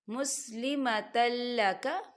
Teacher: لام جو ہے حروف یرملون میں سے ہے تو یہاں پر ادغام ہوگا لیکن بنا غننے کے